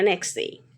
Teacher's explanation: The T is often not pronounced in connected speech. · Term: elision